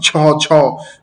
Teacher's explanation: খুব বায়ু তাড়িত হয়ে বের হবে